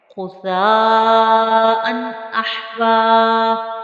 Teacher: پھر تنوین پر ہم نے غنّہ نہیں کرنا چونکہ اس کے بعد حروف حلقی میں سے حمزہ موجود ہے، اور ہا کو حلق سے نکالنا ہے۔